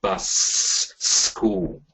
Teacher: So again, you would through abdominal muscle push, of air, you put emphasis on the s sound just before school.